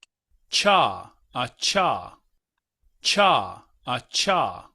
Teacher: no es como que estemos separando la T de la SH, sino que es uniéndolas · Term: africado